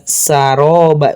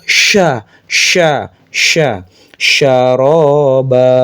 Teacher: Tafasyi itu menyebarnya nafas ke seluruh ee bagian mulut. Jadi, sya itu harus keluar napas banyak. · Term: sya yang besar